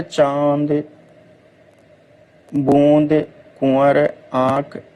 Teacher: अनुनासिक के उच्चारण में वायु नाक और मुख दोनों से निकलती है